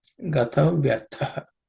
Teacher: The tha is the second letter in the tha category of letter consonants. So tha, there should be extra air and some stress. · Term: aspirated